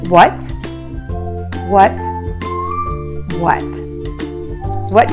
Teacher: that vowel is very closed so to say this word correctly start by puckering your lips for the w sound add the short uh by only opening your lips slightly and making that sound very very short and then end with a t by touching the tip of